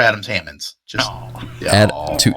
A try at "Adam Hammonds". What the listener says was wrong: you said Adams Hammonds with an S on the Adams. Like you were talking about his ball sack there.